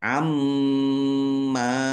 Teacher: ini mim tasdid dibaca mendengung dan ditahan biar tampak mendengungnya. Salafnya dibaca sukun karena waqaf dan dibaca pendek karena tidak ada tanda panjangnya.